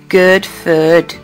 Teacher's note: phrases such as good food are pronounced with vowels of equal length in Belfast and Glasgow